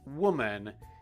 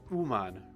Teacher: our main W sound, woman, in Japanese, you say uman, right?